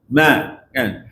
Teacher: suaralah maknanya ma ah cuma kadar nilai bunyi suara tu berbeza bila sebut ma tu di hidung tu paling sikit sekali suara tapi ada di hidung